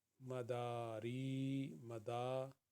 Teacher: میم کو ایک حرکت کے برابر پڑھیں گے، دال کو دو حرکت کے برابر پڑھیں گے اور را یا ری یہ بھی دو حرکت کے برابر ہے۔